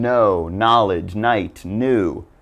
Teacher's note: do not pronounce the K just ignore it and give it the n sound